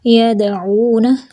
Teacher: یدعون دال پہ کلکلا اور عو پہ واو مد ہے